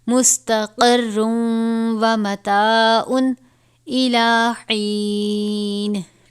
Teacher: تنوین کے بعد حرف یرملون میں سے واو آیا ہے تو ہم اس کو غنہ بھی پڑھیں گے